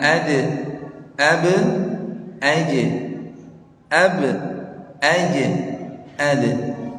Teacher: kalau qalqalah ba jim dal itu tetap memang ke bawah Pak